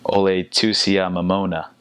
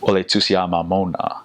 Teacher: it's almost like they open their mouths a little bit wider when they're pronouncing the A's and O's